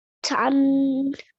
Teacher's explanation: You made that nasal sound and you prolonged it for 2 seconds.